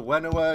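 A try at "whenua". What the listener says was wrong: Did you know that in actual Maori, Wenua is pronounced Venua?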